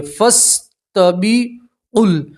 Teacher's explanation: الف نہیں پڑھیں گے ف پڑھیں گے